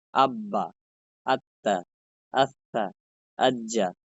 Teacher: তাসদিদের উচ্চারণ 2 বার করতে হয়, মানে একটা হরফের উচ্চারণ 2 বার করতে হয়